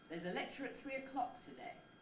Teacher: before the nucleus we've got both a pre-head on those first two unstressed syllables and then the head is lecture at three up that stretches · we find that the nucleus is on clock just a single syllable